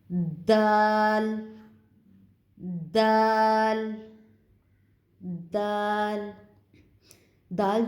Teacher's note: دال جو ہے یہ نوک زبان اور ثنایا علیہ کی جڑیں جو ہیں ان سے اس کی ادائیگی ہوگی۔ ثنایا علیہ کی جڑیں، اس سے اس کی ادائیگی ہوگی۔